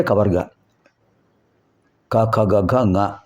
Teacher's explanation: అందుచేత అక అ క హకారం విసర్గ ఇవి కంఠములు కంఠ స్థానంలో పలుకబడేవి అ క అంటే నాలుక మూల భాగం ఆ పై భాగాన్ని స్పృసించడం వల్ల ఇవి వస్తున్నాయి